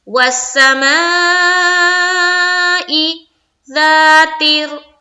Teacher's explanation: वस्समाइ ज़ातिर रज्अ, वस्समा, वासिन जबर वस, सिन जबर सा, मीम जबर मा, और अलमद है, मीम अलिफ जबर मा, ऊपर मद, माई, यहाँ पर मद करेंगे यानी कि 4 से 5 अलिफ के मिकदार के बाकदर अलिफ के खींचना है